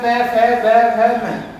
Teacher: ये हमारे ओष्ठ से निकलते हैं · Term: पै वर्ग